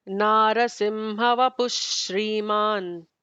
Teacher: Instead of the Visarga, we'll do an extra emphatic sh, which is with the Shri.